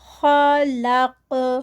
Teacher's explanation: خا ہیوی، قاف ہیوی، اور لام بیچ میں لائٹ ہے